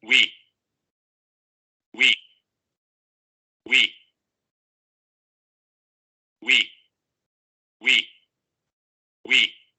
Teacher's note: Vean cómo justamente el dorso de la lengua sube hacia la parte velar. Hay redondamiento de labios, por eso se llama labio velar, porque hay redondamiento de labios.